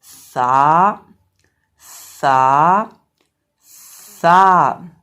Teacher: जुबान की नोक सामने वाले ऊपर के दो दांतों के किनारे से जब लगे तो सा अदा होता है।